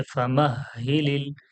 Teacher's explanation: হা এর উপরে তাসদিদ আছে বলে হাটা ডবল পড়াচ্ছে